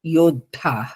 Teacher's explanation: last కి ధ మహాప్రాణం గట్టిగా పలకాలి